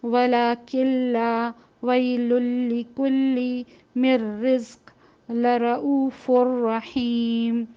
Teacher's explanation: تو بالکل نون کی آواز نہیں آئے گی اور نہ غنہ ہوگا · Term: ادغام بغیر غنہ